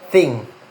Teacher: the first is the voiceless dental fricative